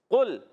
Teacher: قل، قاف ادا ہوتا ہے زبان کی جڑ اور تعلق کے سے قاف ادا ہوتا ہے. لام ساکن ہے، لام کو ہلانا نہیں ہے. قل، قاف موٹا رکھنا ہے